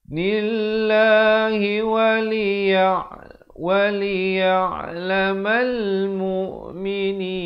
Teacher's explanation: lafz jalalah dibacakan dengan nipis kerana datang sebelumnya baris kasrah 2 harakat